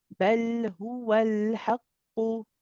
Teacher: It has to be hu, not ho. Okay, so we need to make sure it's a u sound.